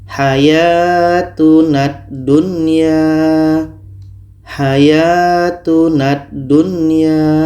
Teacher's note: Oke, kita tidak baca hayatunal dunya. Lam tidak kita baca lagi. Tapi bunyi na ini terus masuk ke dah. Kita masukkan secara sempurna kepada dah. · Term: idgham kamil